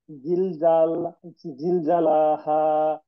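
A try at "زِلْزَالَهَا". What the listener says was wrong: ঝাতে টান আছে, জিল, জিল জা।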